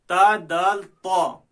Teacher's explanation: زبان کی نوک اور ثنایا علیہ کی جڑ